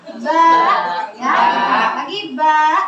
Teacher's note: Ba keluar dari kedua bibir dan sifatnya tipis.